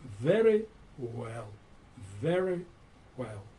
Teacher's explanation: Слово начинается с буквы V, и нужно читать четкое V, V. Вот зубы стартуют с нижней губы.